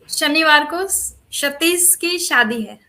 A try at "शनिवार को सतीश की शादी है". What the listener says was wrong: Not Shatish, it's Satish, isn't it?